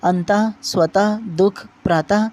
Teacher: यह भी अनुस्वार की भांति स्वर के बाद आता है तथा यह उच्चारण में ह की तरह होता है। यह कंठ वर्ग के अधीन आता है, जैसे अंतः, स्वतः, दुख, प्रातः। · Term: विसर्ग